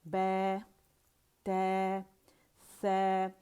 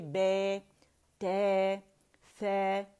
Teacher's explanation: زبان اس میں فلیٹ ہوگی، امالہ نہیں ہوگا